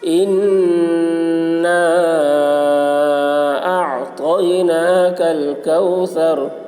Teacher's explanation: نون کے اوپر تشدید ہے، اس لیے نون کی آواز کو ناک میں لے جا کر ایک الف کی مقدار کھینچیں گے، اس کو غنہ کہتے ہیں۔ حرف مد کے بعد حمزہ دوسرے کلمہ میں ہے، اس لیے مد منفصل ہوا، مد منفصل کو 3 یا 4 الف کے برابر کھینچ کر پڑھیں گے، ایک الف کے برابر کھینچ کر پڑھنا بھی جائز ہے۔